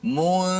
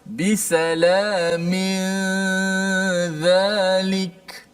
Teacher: Daripada mim terus pergi zal. Nun hanya kita kekalkan pada gunnah di hidung saja. Sebut mu, mulut kita terus pergi, lidah kita pergi huruf zal tanpa menekan-nekan huruf zal, hanya standby di makhraj zal. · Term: ikhfa hakiki